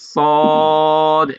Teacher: মাখরাজের দিক দিয়ে সদ, সিন, ঝা পাতলা, ঠিক আছে, কিন্তু সিফাতের দিক দিয়ে সদটা মোটা হয়ে যাবে।